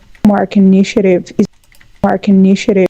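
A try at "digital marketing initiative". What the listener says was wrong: There we did have a syllable deletion. I didn't hear marketing. I heard I think I heard all of this get chopped off, and I think I heard mark initiative. If I'm not mistaken.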